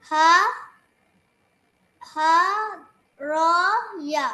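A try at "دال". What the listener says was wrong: নট র, this is দাল।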